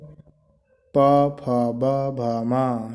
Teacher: जिन वर्णों का उच्चारण ओठों से होता है उन्हें ओष्ठी व्यंजन कहते हैं